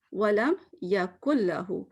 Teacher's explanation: نون نظر آ رہا ہے, جبکہ میں نے تو نون نہیں پڑھا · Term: ادغام